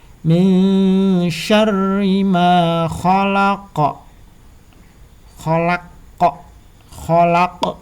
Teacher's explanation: Jadi qafnya pantul, bukan khalaq gitu aja, enggak. Karena ini huruf qaf ini adalah huruf qalqalah ketik.